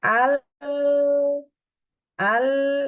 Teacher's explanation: paling Akir kita lihat di paling bawah namanya inhir di mana setelah hurufnya keluar dari ujung lidah suaranya keluar menurun ke permukaan lidah